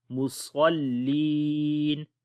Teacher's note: لام آ گیا، ادغام کریں گے بغیر غنہ کے، فویلل للمصلین، صاد کو موٹا پڑھیں گے اور یہاں پر یا مدہ ہے، لمبا کریں گے